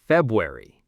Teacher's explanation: The R is basically silent. February. >> Some people might emphasize it a tiny bit, but mostly it's just gone.